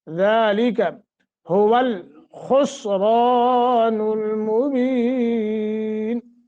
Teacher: خا کو موٹا را موٹا اور را کے آگے الف ہے 1 سیکنڈ کی مد کریں گے